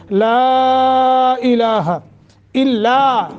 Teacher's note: لا مد منفصل ہے، لمبا کر کے پڑھیں گے